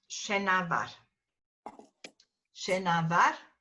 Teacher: between the N and the M is an epenthetic vowel A